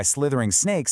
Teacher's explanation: That phrase is just packed with what we call sibilants, that repetition of the S sound, to create that hissing, sneaky effect.